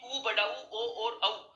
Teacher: अब इससे ठीक पहले वाली क्लास में हमने पढ़ा था, जब स्वरों का वर्गीकरण मैंने आपको बताया था कि ऊ, बड़ा ऊ, ओ और औ, ये 4 स्वर होते हैं जो वृत्ताकार स्वर होते हैं, ओष्ठ आकृति को गोल कर देते हैं। इन स्वरों के उच्चारण में होठों का आकार गोल होता प्रतीत होता है।